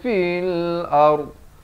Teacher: Dha ini makhrajnya di tepi lidah. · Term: huruf dha